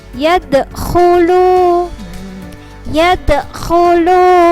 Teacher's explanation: Terus ini adalah huruf kha. Kha itu adalah di pangkal tenggorokan